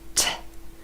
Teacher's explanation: T is an unvoiced consonant in English. Unvoiced means that we do not use our vocal cords. And you can test this by putting your hand very lightly to your throat.